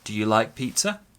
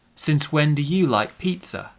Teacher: We go down at the end because it's not a real question, right?